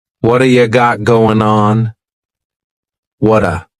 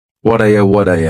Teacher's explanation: that T at the end of the word what is going to change to a D sound this is really typical of American English where a t that's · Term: flapped